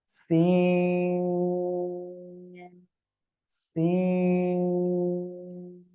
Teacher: জিহ্বার আগা, সামনের নিচের 2 দাঁতের পেট ও আগার সঙ্গে লাগিয়ে এরকম একটা আওয়াজ হয়ে এটা উচ্চারণ করতে হবে।